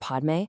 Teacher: If you zoom in on the Sanskrit word Padme, right in the center you have a hard P sound colliding directly with an M sound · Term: consonant cluster